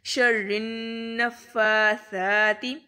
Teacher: تو ہم نے قاعدہ پڑھا تھا کہ جب نون کے اوپر شد آئے گی تب ہم اس پر غنہ کریں گے. تو شرن پہلے کریں گے اور پھر را کو نون کے ساتھ ملاتے ہوئے غنہ کریں گے.